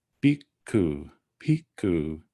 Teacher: Notice this word, if I were to break it up as I would spell it, it be spelled, it is spelled like this. So it starts with an aspirated B, an I, a K, and then an aspirated K and a U, bhikkhu, bhikkhu. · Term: aspirated consonants